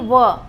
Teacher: जब आप व कहेंगे तो जो आपके दांत है वो आपके नीचे वाला जो होठ है उस पर जो है चिपक रहा है